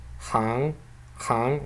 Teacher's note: We do not have a vowel here, written here, so this means that this n is not a dental n but a velar one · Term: velar nasal ng